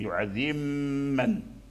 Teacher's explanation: فمن أدغم فالغنة حاصلة في الميم، يعذب من. أما الباء لم يبقى له أثر، فكانت الميم مشددة، والميم المشددة لابد من إظهار الغنة، يعني صوت خارج عن المخرج. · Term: الإدغام